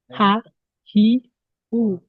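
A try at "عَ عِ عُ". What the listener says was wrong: আবার হাতে পড়ে আছে রে। আমি আইনেরটা বলতেছি, আইনেরটা ওইভাবে ভিতর থেকে উচ্চারণ করতে হয়। আইন যে আইন যাবার আ, আইন জেরে আই, আইন পেশ ও, আ আই ও। হ্যাঁ ভিতর থেকে উচ্চারণ করতে হবে।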